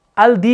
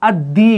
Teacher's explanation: یہاں پر لام جو ہے نا وہ مدغم ہو جاتا ہے آگے دال میں، اور جب یہ مدغم ہو جاتا ہے، اور مدغم کے لیے ایک سمبل ضروری ہوتا ہے شد والا، تو دال کے اوپر ہم ایک شد دیتے ہیں.